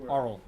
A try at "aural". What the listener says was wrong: No, don't put more emphasis on the first syllable than the last syllable.